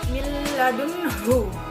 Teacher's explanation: nun sukun bertemu dengan lam yang disebut dengan idgham bila gunnah, yang bacanya dimasukkan